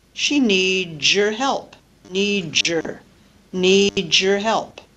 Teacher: Z plus a y produces J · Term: coalescent assimilation